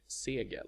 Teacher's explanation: the vowel is long in the word's core and so it remains when we change it to the definite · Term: vowel length